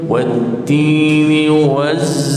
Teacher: Kemudian tun, ta berbaris depan, maka muncungkan mulut.